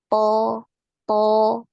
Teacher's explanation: ketika kita mengucapkan huruf th ini tidak ada nafas yang ngalir yang keluar dari dalam mulut kita ya th th ya itu tidak ada tidak ada aliran nafasnya